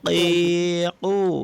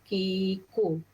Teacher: Dia sama makhraj berlainan sifat. Kalau qaf sifat dia berat, kaf ringan.